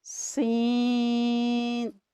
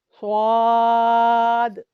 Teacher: یہ تینوں حروف سختی سے ادا ہوتے ہیں۔ اس میں زا اور سین مرقق حروف ہیں، جبکہ صاد مفخم حرف ہے۔